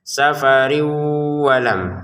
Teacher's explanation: tanwin bertemu wau kita baca dengan dengungan. Caranya adalah tanwinnya kita masukkan ke wau safarin menjadi safariu. · tanwinnya kita masukkan ke waw, safarin menjadi safariu, kemudian didengungkan